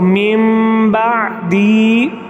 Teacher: اب میم بعدی، یہاں اگر ہم اس کو ہجے کے ساتھ وہ پڑھیں تو میم نون ساکن ہے اور نون ساکن کے بعد حرف با آ رہا ہے، تو یہاں ہم نون ساکن پر اقلاب کریں گے، نون ساکن کو ہم میم سے بدلیں گے مع غنہ کے